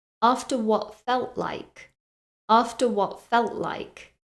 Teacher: I don't actually pronounce the T sound on either of those words